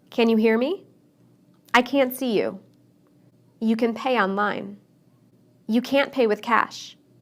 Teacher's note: I didn't use the T sound in any of those sentences